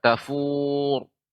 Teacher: kemudian pada kata tafur ya ro dibaca dengan tebal